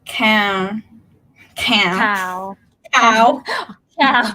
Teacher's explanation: Live syllable because I can prolong the sound.